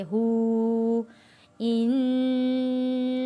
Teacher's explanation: इन्नहु, इन्नहु, नून के ऊपर तशदीद है, यहाँ पे हमने गुन्ना अदा करना है। हा के ऊपर उल्टा पेश है, खड़ी हरकत है, एक अलिफ के बराबर खींच कर पढ़ेंगे।